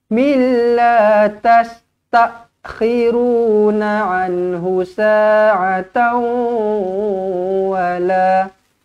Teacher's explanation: Jumpa dengan lam, tak payah dengung, masuk sahaja.